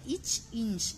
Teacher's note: அடுத்தது பாருங்க இச் இன்ச் ஆகிய இரு மெய்களும் நாவின் இடைப்பகுதி நடு அண்ணத்தின் இடைப்பகுதியை பொருந்துவதால் பிறக்கின்றன